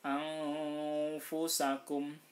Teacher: Jadi bukan ang tapi nunnya tetap dibaca tapi separuh saja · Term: ikhfa hakiki